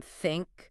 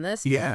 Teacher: the unvoiced th as in think right and the voiced th as in this